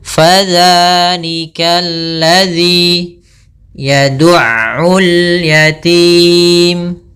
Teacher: Fa tadi kelupaan, yaitu jangan sampai dipantul, jangan sampai pa dengan p, tapi dia fa, aliran nafasnya mengalir